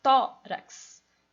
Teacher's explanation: O tó é mais forte.